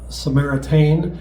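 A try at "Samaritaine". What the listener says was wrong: And it's not Tain. You're definitely saying.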